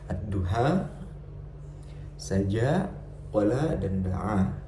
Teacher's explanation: Sebagai contoh adalah fenomena bacaan imalah, yaitu mencondongkan bacaan harokat fathah ke kasroh